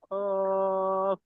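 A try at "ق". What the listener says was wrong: একটু মোটা হবে, ভিতর থেকে হবে।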